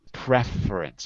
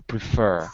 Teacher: in the word preference it's a noun so we move it to the first syllable preference but in a verb to prefer second syllable okay and